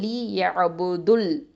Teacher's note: அப்போது தால் தொம்மா லாம் ஷத்தா துல் அப்படின்னு வந்துடும். இந்த வாவ் வந்து வாவ் மத்து வந்து வீழ்த்தப்பட்டுடும்